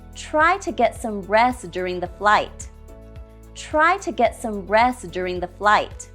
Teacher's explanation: we drop the T in rest